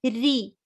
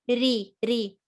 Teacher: And then this one, the kasra, a sign underneath ra makes it light. So empty mouth. So ri, not re, re.